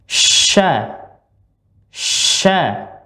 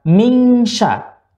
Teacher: Sebagaimana yang telah kita pelajarin dahulu, bahwa huruf shin, ya, posisi letaknya adalah tengah lidah. Tengah lidah bertemu dengan langit-langit bagian atas, tapi tidak menyentuh